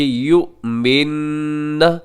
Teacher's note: یو کو آپ جھٹکے سے پڑھیں گے اور اس کو مجہور پڑھنے سے آپ نے بچنا ہے